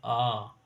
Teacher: पश्च स्वर जीभ के पीछे से आवाज आए, वो पश्च स्वर। जैसे आ पीछे से।